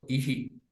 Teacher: First, we are pronouncing the swara, okay, and then we are pronouncing the Visarga.